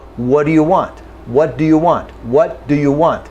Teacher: the T and the D are made in the same position in the mouth. So we do not articulate a separate T, a separate D.